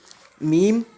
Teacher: la lettre Mim qui est prononcée en joignant les lèvres ainsi.